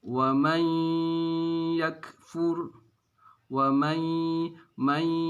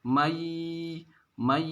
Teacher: idgham artinya dimasukkan ya menunya dimasukkan ke dalam huruf ya kemudian ada dengungnya · ada suara atau nafas yang keluar dari hidung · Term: Idgham Bighunnah